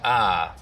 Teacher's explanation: talked about the fact that some African-American speakers in southern Appalachian smooth out the eye diphthong the price vowel in some words and we got a long ah sound